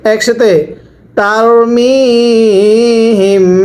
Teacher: জেরের পরে ইয়া সাকিন এক আলিফ টানতে হবে